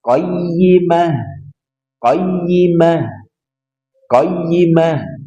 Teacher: Jadi ditekan qoyi. Ingat ta marbuto di akhir maka dia dibaca ha keluar dari pangkal tenggorokan